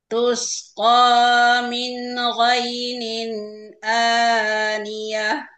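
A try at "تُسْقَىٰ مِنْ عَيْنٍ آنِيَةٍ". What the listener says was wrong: Ini bukan go, ini huruf apa? Ain.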